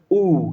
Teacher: लग रहा है कंठ के पीछे से आ रहा है ना, पश्च संवृत।